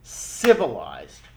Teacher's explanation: Look at the word civilized. It's the si part, the I part that gets the stress, the emphasis, right? Civilized. So the way that we make those, way that we emphasize those and make them stressed is by making them longer and louder.